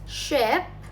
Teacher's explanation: the sound starts directly with friction